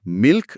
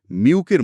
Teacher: যেমন যেমন এল ভোকালাইজেশন, যেখানে শব্দের শেষের এল সাউন্ডটা উচ্চারণ করার সময় জিভ আর ওপরে ওঠে না, বরং ঠোঁট গোল হয়ে সেটা একটা ওয়াই বা ভাওয়েলের মতো সাউন্ড তৈরি করে। তার মানে মিল্ক শব্দটা শুনতে মিউকের মতো লাগে।